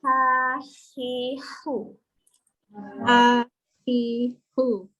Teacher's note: angin keluar dulu baru ada bunyi